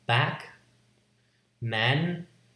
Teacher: This is a low front vowel, as in back, man.